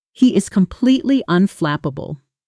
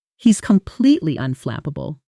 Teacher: In fast, natural speech, he is almost always contracts and blends into he's and completely often loses a little of its middle syllable, coming out more like completely.